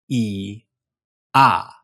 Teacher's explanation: You'll notice that your tongue starts up high, E, and then goes down to ah.